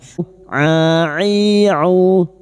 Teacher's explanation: Ain wastul halqi atau tengah tenggorokan